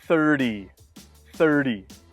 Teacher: in American English, when a T is in the middle of the word, we often pronounce it D.